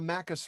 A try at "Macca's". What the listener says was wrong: Just your use of the pronunciation of the S on Macus there, a Macus run.